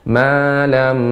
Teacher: hukum idgham bi gunah, panjangkan gunnahnya